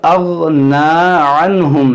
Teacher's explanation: دیکھیں یہاں پر اغنا عنہم, نون ساکن کے بعد ہا, یہاں پر اظہار ہوگا.